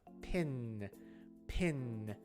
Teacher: the n sound is closer to the front of the mouth pin pin my tongue is like almost between my teeth